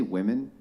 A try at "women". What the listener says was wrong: Yeah, instead of woman. You keep on saying woman is plural, like women.